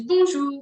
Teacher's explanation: French nasal vowel sound which means it comes from your nose